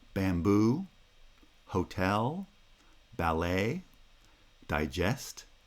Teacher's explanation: bamboo hotel ballet digest these are two-syllable words made up of two monosyllabic feet in which the first foot is the weak foot and the second foot is the strong foot